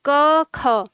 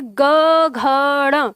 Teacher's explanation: क ख में कंपन न के बराबर है, बिल्कुल न के बराबर, लेकिन ग घ ड़ में कंपन बहुत तीव्र हो जाता है, तेज।